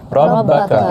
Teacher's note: Ra baris atas, maka ra dibaca dengan tebal.